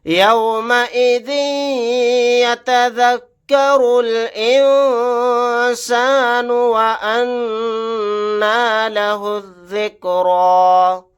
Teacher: ذال کے نیچے تنوین ہے، تنوین کے بعد یا آ گیا تو یہاں پر ادغام غنہ کا قاعدہ ہوگا · را کو لام کے ساتھ ملا دیں گے، الف نہیں پڑھا جائے گا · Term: اخفا